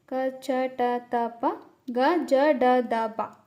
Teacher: ಕಡಿಮೆ ಉಸಿರಿನ ಸಹಾಯದಿಂದ ಉಚ್ಚರಿಸುವಂತಹ ಅಕ್ಷರಗಳಿಗೆ ಅಲ್ಪಪ್ರಾಣ ಅಂತ ಅಂತ ಕರೀತೀವಿ. ಅದು ಯಾವುದು ಯಾವುದು ಅಂದ್ರೆ ಕ ಚ ಟ ತ ಪ ಗ ಜ ಡ ದ ಬ ಇದನ್ನ ನಾವು ಅಲ್ಪಪ್ರಾಣ ಅಂತ ಕರೀತೀವಿ.